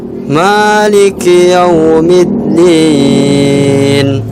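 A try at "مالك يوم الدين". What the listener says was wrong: Ya, nggak apa-apa.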